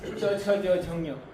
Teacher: You use talu. Talu means you have to touch your tongue to the back of the upper palate. Without that you cannot pronounce this.